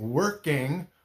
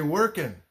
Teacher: a lot of Americans don't pronounce that G when it's at the end of a word